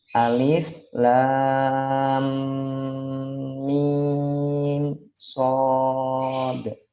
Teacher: Koreksinya kalau baca alif lam mim shad, ketika mim ke shad tidak perlu ditahan karena itu jelas bacaannya idhar. Jadi alif lam mim shad.